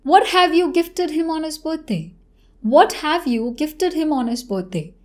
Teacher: the major focus will go on the first part of the sentence and less on the next part and that's why the intonation will go down this is a · the intonation towards the end will go down